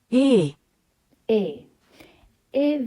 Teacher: bu almancadaki e harfi Türkçedeki e harfinden biraz farklı Biraz daha açık okunuyor